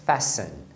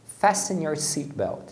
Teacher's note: Você não pronuncia esse T de jeito nenhum.